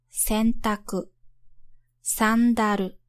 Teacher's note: when you pronounce the n sound in these words, your tongue is already getting in position for the upcoming consonants.